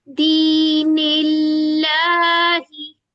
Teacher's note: बारीक पढ़ा जाएगा, क्योंकि इससे पहले क्या है, कसरा है, तो दोनों लाम पतले पड़े जाएंगे